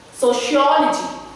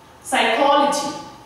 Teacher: we are again going to stress on the syllable which is before logy